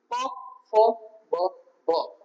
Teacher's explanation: પ ફ બ ભ. જ્યારે તમારો ઉપરનો હોઠ અને નીચેનો હોઠ જોઈન્ટ થતો હોય ત્યારે આ શબ્દનું ઉચ્ચારણ થાય